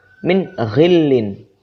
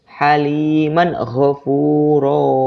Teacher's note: Apabila nun sukun atau tanwin bertemu dengan huruf ghain, itu dibaca izhar atau jelas.